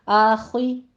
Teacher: आखी आखे नहीं कहना, आखी रॉ मुफखम पढ़ी जाएगी